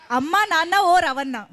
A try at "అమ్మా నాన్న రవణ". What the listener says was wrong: ఓ రవణ వద్దు, రవణ. రవణ కలిసిపోయాడు మా దాంట్లో, అంతే.